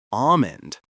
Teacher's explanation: The general rule for almond is that the L is also often silent.